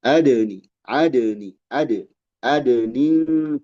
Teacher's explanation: adni dal fiha muqalqalah dipantulkan